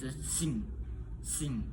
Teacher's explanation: pada bunyi bagian belakang lidah menyentuh velum sehingga udara keluar melalui hidung. Bunyi ini ee biasanya ee muncul di akhir suku kata dan tidak diawali huruf ah saat diucapkannya itu sing sing. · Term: voice fellar nasal